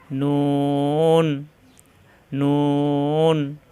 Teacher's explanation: জিহ্বার আগাটা উপরের তালুর সঙ্গে বরাবর তালুর সঙ্গে লাগাইয়া